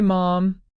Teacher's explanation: Notice how when you make the M sound, your lips are closed and the sound comes out through your nose. The veum is lowered to allow that to happen.